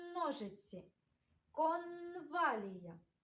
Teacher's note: Твердий приголосний звук «н» ми чуємо в таких словах: ножиці, конвалія.